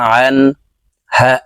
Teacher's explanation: নুন সাকিনের পরে ইজহারের হরফ হা আসছে তাই এই নুনকে গুন্নাহ ছাড়া স্পষ্ট করিয়া পড়বো